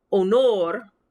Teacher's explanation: you'll notice i don't even say the sound of the h